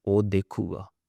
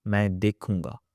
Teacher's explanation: So when we use o, there's no nasal sound. We say o dekhuga.